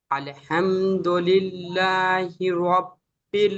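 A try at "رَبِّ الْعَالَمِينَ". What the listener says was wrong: আ টান হবে না? আয় কি আছে? খাড়া যাবার, আলিফ মাদ্দার সমতুল্য, টান হবে। আলহামদুলিল্লাহি রাব্বিল আলামিন।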